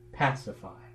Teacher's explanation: if we start with just the word pacify it has first syllable accent